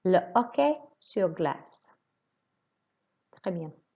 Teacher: Now you notice that the H is silent here.